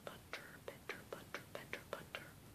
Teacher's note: There, your tongue is tapping against your palate.